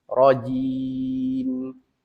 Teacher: Bila kita waqaf rajim, ji kita bunyikan dulu panjang. Baru kita merapatkan bibir mim tu. Rajim. Jangan kita buang huruf ya. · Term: mad arid li sukun